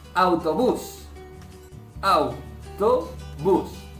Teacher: A-U, abierta más cerrada, por lo tanto es diptongo